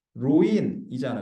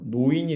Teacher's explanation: 리을은 니은으로 교체되는 거야. 그래서 노인이 되는 거야. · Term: 두음 법칙